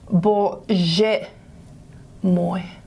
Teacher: the G, the velar, has been pulled forward to a J, post-alveolar